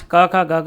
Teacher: कंठ से बोले जाने इनको कंठ्य कहा जाता है। तो उच्चारण में जीवा को कंठ को स्पर्श करती है।